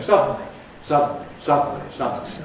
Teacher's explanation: you've got this DNL sequence without any movement of the tongue tip. Adjustment, if you think about it, first of all of the soft palate, and then of the sides of the tongue, to get from the N to the L. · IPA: ˈsʌdn̩li